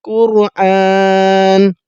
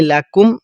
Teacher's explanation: دیکھیں قوف پر کر کے پڑھیں گے